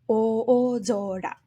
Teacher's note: The two お (o) are two separate moras and therefore also separate beats